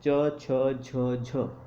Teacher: वायु जो है संघर्ष भी करती है और हमारे मुख के अंग जो हैं वो स्पर्श भी करते हैं अपने ऊपर वाले अंग से। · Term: संघर्ष स्पर्शी व्यंजन